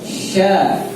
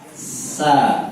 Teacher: yang satu di tengah lidah, ya di dalam sya, yang satu di lidah depan, ujung lidah nempel di gigi bawah, sa, di gigi bawah.